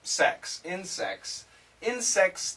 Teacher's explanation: here the S cancels the T